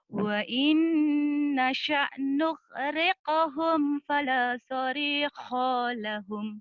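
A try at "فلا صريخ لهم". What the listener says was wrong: Pendek. Fala sarikha lahum. Pendek.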